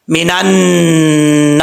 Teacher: ایک الف کی مقدار غنہ کیا جائے گا نون مشدد کی وجہ سے. میں آپ کو کئی دفعہ قرآن پاک سکھاتے ہوئے بتا چکا ہوں کہ نون اور میم کے اوپر شد آ جائے تو غنہ کیا جاتا ہے ایک الف کی مقدار.